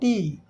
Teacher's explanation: ओठ खुला रहेगा और जीभ जा के ऊपर वाले दांत का जो मसूड़ा है पीछे जहां से दांत निकला है वहां जीभ जाएगी हवा रोकेगा उसके बाद हवा फिर हवा रुकेगा फिर हवा ठेल देगा और की आवाज आएगी।